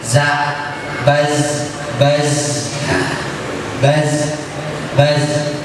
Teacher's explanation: Jadi ada huruf yang mengalir suara tapi tidak mengalir nafas, seperti huruf zai. Za itu suara mengalir, za, baz, tapi tidak mengalir nafas.